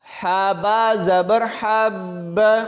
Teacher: ہا کی آواز حلق سے نکلے گی اور با کے ساتھ ملاتے ہوئے سختی سے پڑھا جائے گا۔